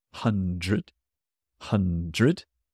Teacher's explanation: The word hundred has DR in it, so that starts to sound like a J.